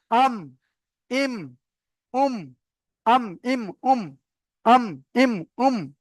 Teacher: দুই ঠোঁটের শুকনো অংশ মিলিত হয়ে মিম উচ্চারিত হয়। আমাদের যে দুটো ঠোঁট রয়েছে, এই দুটো ঠোঁটের শুকনো অংশ, অর্থাৎ ভিতরের দিকটা ভিজা অংশ, বাইরের দিকটা শুকনো অংশ, এই শুকনো অংশটা মিলবে। · মিম দুই ঠোটের শুকন অংশ মিলিত হয়ে মিম উচ্চারিত হয় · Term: মিমের মাখরাজ